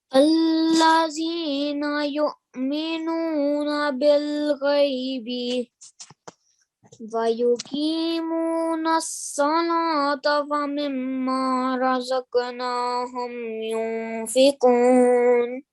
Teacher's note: so make sure to do nasal sound for around 2 seconds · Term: noon gunna